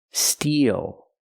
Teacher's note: The long E like green beans plus the dark L.